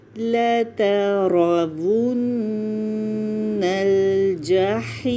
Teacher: میم کے لیے ہونٹ بند کر دیں گے، میم کے مخرج پہ جا کے وقف کر رہے ہیں